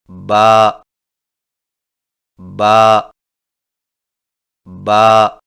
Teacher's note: با کی ادائیگی میں ہونٹوں کے گیلے حصے کو سختی سے ملا کر باریک آواز میں پڑھیں، یعنی با با با.